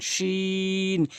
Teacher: শিনটি হচ্ছে জিব্বার মাঝখান উপরে তালুর সঙ্গে লাগে, শিন জিব্বার মাঝখান উপরে তালুর সঙ্গে 3 আলিফ টেনে পড়বেন, শিন।